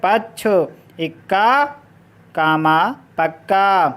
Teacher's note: संयुक्त के पूर्ण वाले वर्ण पर बलाघात होता है।